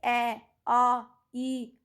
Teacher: इनको मौखिक स्वर भी बोला जाता है। जिन स्वरों के उच्चारण में हवा केवल मुंह से निकलती है उन्हें निरुनासिक या मौखिक स्वर कहते हैं।